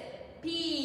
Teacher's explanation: it's like a little puff of air and you can feel it on your finger